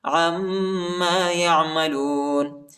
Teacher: عین کو میم کے ساتھ ملائیں گے اور غنہ کریں گے